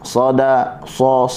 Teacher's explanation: Okey, huruf dal tetap berada dalam keadaan nipis walaupun dia diapit oleh dua huruf yang tebal. Okey, huruf sad, sa, kita kena rasa pangkal lidah kita menaik dan hujung lidah kita juga menghala ke atas. Sada, sa menyebabkan ada lekukan di tengah.